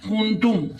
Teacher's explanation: میم ساکن کے بعد فا آیا تو اظہار شفوی ہو رہا ہے، اظہار شفوی پر ہم گناہ نہیں کریں گے۔